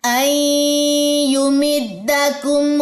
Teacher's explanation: نون ساکن کے بعد یا ہے، ادغام مع الغنہ ہے